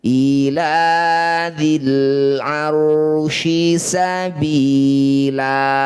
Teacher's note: Fathah tanwin dihentikan, disebut bacaan namanya mad iwad. Bunyi fathah tanwinnya kita ganti jadi fathah panjang ya. Nah, panjangnya 2 harokat saja. Awalnya ila dzil arsy sabilan.